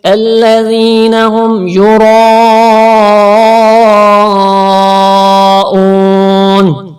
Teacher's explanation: را کو موٹا کرنے کے ساتھ ساتھ تھوڑا سا کھینچ کے بھی پڑھیں گے کیونکہ آگے الف ہے اور الف سے پہلے زبر ہے، یہ حرف مدہ بھی ہے، اور یہاں پر بھی واو ساکن سے پہلے پیش ہے. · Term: را موٹا حرف